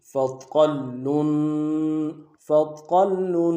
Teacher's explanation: وابل فطل فا کو نرم سے ادا کریں گے، طا کو موٹا ادا کریں گے، موٹا ادا کرتے ہوئے لام کے اوپر ساتھ ملائیں گے، لام کے اوپر تشدید زور دیں گے اور لام کے اوپر تنوین ہے غنہ کریں گے.